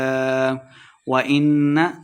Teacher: وَإِنَّ نون مشدد ہے تو غنہ کر کے پڑھیں گے